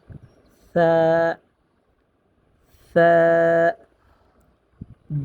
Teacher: তো আমরা সা উচ্চারণ করব জিহ্বার আগা উপরের দুই দাঁতের আগার সাথে লাগিয়ে, সামনের উপরে দুই দাঁতের আগার সাথে লাগিয়ে।